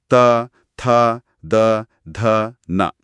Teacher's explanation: >> ದಂತ್ಯ ಅಂದ್ರೆ >> ಅಂದ್ರೆ ಡೆಂಟಲ್ ಇಲ್ಲಿ ನಾಲಿಗೆ ತುದಿ ಹೋಗಿ ಮೇಲಿನ ಹಲ್ಲಿನ ಹಿಂದೆ ತಾಗುತ್ತೆ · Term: ದಂತ್ಯಗಳು